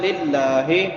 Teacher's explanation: لفظ اللہ باریک ہوگا کیونکہ لفظ اللہ سے پہلے زیر ہے، زبر ہو پیش ہو تو پھر موٹا پڑا جاتا ہے، زیر ہو تو باریک ہوتا ہے۔